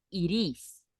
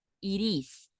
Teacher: we can pronounce the T like a r